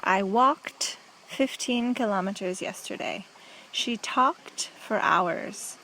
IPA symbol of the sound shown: t